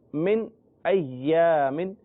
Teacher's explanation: دیکھیں من کے بعد ناک میں آواز نہیں جا رہی